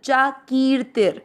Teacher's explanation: की मात्रा को खींचना है ती को नहीं क्योंकि की मात्रा बड़ी है